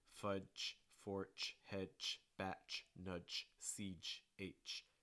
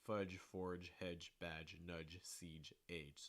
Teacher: make sure that these are not changing into ch sounds